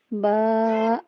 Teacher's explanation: با بند ہونٹوں کے گیلے حصے سے با ادا ہوتا ہے اور با کی مقدار 1 الف 2 حرکات کے برابر ہم نے با کو کھینچ کے پڑھنا ہے اور با 2 حروف سے مل کے بنا ہے۔